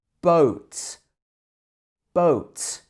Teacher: In French, you have the O sound, but it's very short.